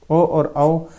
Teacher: ओ और औ का उच्चारण किससे, कंठ और ओष्ठ से होता है। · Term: कंठोष्टम